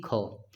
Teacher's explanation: स्पर्श व्यंजन कंठ ध्वनि अघोष और महाप्राण ध्वनि कौन सी है